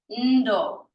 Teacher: You will also hear this said as ndo, where that I is barely there. Both are correct, that's fine.